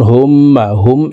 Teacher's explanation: পেশওয়ালা হাটি তাসদিদওয়ালা মিমের সাথে 3 সেকেন্ড পরিমাণ গুন্নাহ করে পড়ব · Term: ওয়াজিব গুন্নাহ